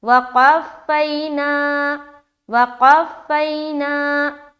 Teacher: गौर करें तो सब जगह हमने जल्द पढ़ा, ना में हमने खींचा, क्यों, क्योंकि यहाँ पर अलिफ मद्दा हो रहा है।